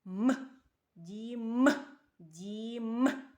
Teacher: у цьому слові правильно три який перший звук правильно М'який приголосний а останній звук м твердий приголосний